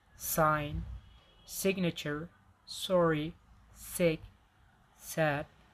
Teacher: And here we have alvolar fricatives. Voiceless one is s